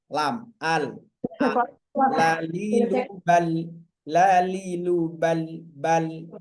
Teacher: Lam keluar dari ujung lidah ke langit-langit atas.